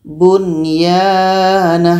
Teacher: Jadi ini dibaca jelas dan tidak dengung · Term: idzhar wajib